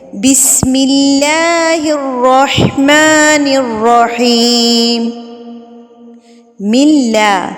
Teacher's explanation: اللہ لفظ سے پہلے زیر آ گئی ہے تو ہم اس کو باریک پڑھیں گے